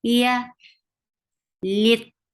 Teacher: The makhraj of ya is the middle of your tongue is lifting towards your palate, but it does not touch the palate. So it's just lifting up.